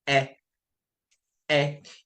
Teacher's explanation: When you say E, your mouth is supposed to open up a little more.